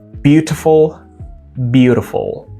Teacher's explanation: You see, it's not one word, there are 2 different words, but still that T is located between 2 vowel sounds, so it becomes a soft D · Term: flap T